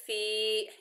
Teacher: ऐसे पढ़ेंगे। फी, या मद्दा है, एक अलिफ की मिकदार खींच कर पढ़ेंगे